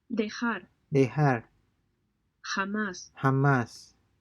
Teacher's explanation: The Spanish J is pronounced like the H in the word hot, except that it's raspier.